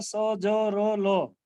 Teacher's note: वत्स्य, ये दांतों की जड़ से इनका उच्चारण होता है